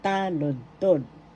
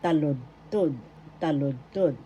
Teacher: The accent is on the first syllable. Taludtod. First syllable ta, second syllable lud, third syllable tod.